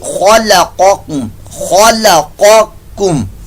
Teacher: یہ قاف پر موٹا ہے اور دوسرا جو آگے کاف آ رہا ہے وہ باریک پڑا جا رہا ہے کاف